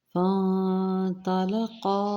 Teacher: فانطلقا، فا کے ہم نے نون کے ساتھ ملانا ہے اور آگے طارا یہاں پہ اخفا کیا جائے گا، مطلب نون کی آواز کو چھپایا جائے گا ناک کے بانسے میں